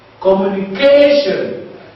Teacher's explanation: the second from the last syllable is stressed. That is the penultimate syllable. We'll count from the end.